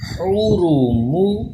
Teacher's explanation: حا کا مخرج کا خیال رکھیں، را کو پر پڑھیں کیونکہ اس کے اوپر پیش آ گیا ہے، اور میم کو باریک